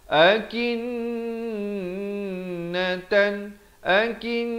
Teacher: Dan tan itu izhar halqi, jangan panjang. Sempurna tan, terus masuk. Masuk beserta dengung 2 harakat. · Di sini nun sabdu kena dengung 2 harakat. Dan tan itu izhar halqi, jangan panjang.